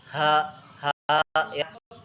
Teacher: Bukan dari dada keluarnya suara ha itu, tetapi dari pangkal tenggorokan.